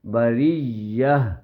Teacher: اس تا کو حالت وقف میں رکنے کی صورت میں سانس روکنے کی صورت میں وہ تا ہا بن جائے گی